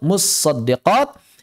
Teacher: Almutasoddiqat tnya disukunkan dimasukkan dalam shad. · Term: idgham